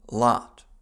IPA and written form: lɑt (lot)